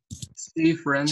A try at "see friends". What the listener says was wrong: See friends. Acuérdense que la I no suena. No friends, es friends. See friends.